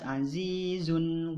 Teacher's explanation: tanwin bertemu dengan ghin, maka tanwinnya dibaca jelas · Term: ijhar